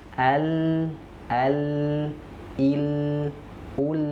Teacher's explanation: Nah, kenapa dia disebut dengan sifat inhiraf? Karena ujung lidah yang naik ke langit-langit itu membuat apa? Suara kita terhalang untuk keluar.